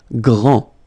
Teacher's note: Grand, final day not pronounced, okay? Gr, and then the nasal en, grand